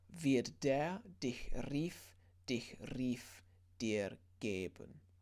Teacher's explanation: so a little rolled R on a rief